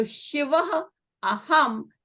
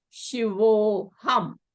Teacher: So you have Shiv o aham. And since this o is followed by a, you again have a vowel sandhi where a is elided, replaced by this avgraha sign, avgraha symbol, and is not pronounced.